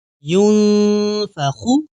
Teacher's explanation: یعنی نون ہم پورا نہیں پڑھیں گے بلکہ نون کی آواز ہم ناک میں چھپا لیں گے۔ اس طرح یا نون پیش یون فا زبر فا ینف خا پیش خو ینفخ وقفا ینفخ۔ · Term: اخفا